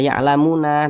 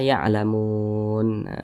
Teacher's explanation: Nah, ketika kita membaca Al-Qur'an berhenti pada huruf yang tidak memiliki tanda baca panjang, maka huruf tersebut disukunkan. Huruf nun ini tidak memiliki tanda baca panjang, maka dia disukunkan ketika kita berhenti pada huruf nun ini.